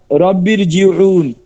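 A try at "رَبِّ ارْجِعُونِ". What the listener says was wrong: না এটা তো চিকন হয়ে গেল, উচ্চারণ আসলো না। রব্বির তো চিকন, রব্বেও। হ্যাঁ আরো মোটা হবে, রব্বেও, বেও।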